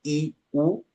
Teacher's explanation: la lengua se acerca más al paladar en comparación de cuando pronunciamos la E, la O o la A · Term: vocales altas